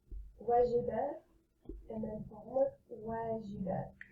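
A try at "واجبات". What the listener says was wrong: I heard homework both. So see the little, I'll highlight the one. Wajah, wajah. Wajabat. And the other one you have to stress on the jim with kasra.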